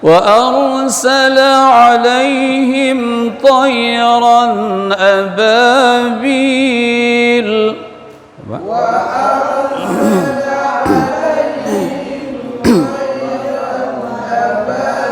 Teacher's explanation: Jangan gara-gara ra tebal sin jadi sad.